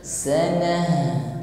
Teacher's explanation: kita tampakkan sifat huruf ha, hamas dan rokhawah, kita alirkan saja. Sanah, jadi bukan sana, ya, beda sana dengan sana.